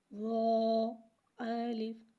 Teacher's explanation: رو کو ایک الف یعنی 2 مقدار کھینچ کے پڑھیں گے۔ رو حرف مستعلیہ لہذا سے موٹا پڑھیں گے، الف کو بغیر کھینچے پڑھیں گے، الف کو موٹا نہیں پڑھیں گے۔